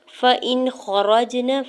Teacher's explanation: فا کے زبر کو جلدی سے ادا کرنا ہے، حمزہ کی زیر کو نون ساکن کے ساتھ ملاتے ہوئے پڑھنا ہے